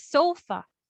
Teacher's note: So the stress there is on the first syllable.